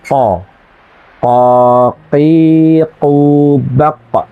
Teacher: Jadi lidah yang paling sana sambil dinaikkan sehingga menghasilkan bunyi qo qoqi quaq. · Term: huruf qf